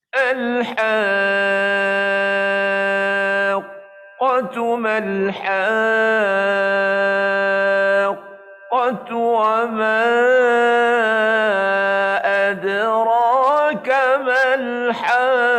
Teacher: Bila kita sebut pada qaf tu, suara macam tersekat. Itu sifat syiddah yang kita tunaikan pada bacaan atau pada huruf qaf itu.